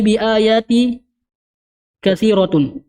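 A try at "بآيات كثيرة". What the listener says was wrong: Tanwin. Tanwin juga ayatin.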